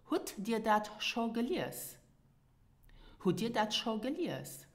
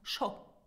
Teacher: Now, as you have seen, Schonn is subject to the N rule. So sometimes the N of Schonn are dropped and then it is pronounced Scho